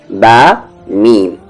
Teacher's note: बा मीम दोनों होठों को मिलने से